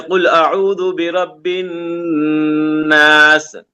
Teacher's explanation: اور جب نون اور میم میں تشدید آئے تو وہاں پہ گننا کریں، جیسے قل اعوذ برب الناس، نون میں تشدید ہے تو یہاں پہ گننا کرنا ہے ہم کو